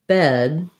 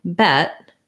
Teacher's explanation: my vowel is slightly longer in bed than it is in bet that's because uh when there's a voiced sound like the d